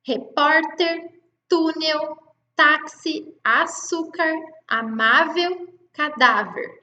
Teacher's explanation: As paroxítonas, elas apresentam a penúltima sílaba forte.